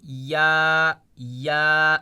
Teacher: زبان کا بیچ اور اس کے مقابل اوپر کا تالو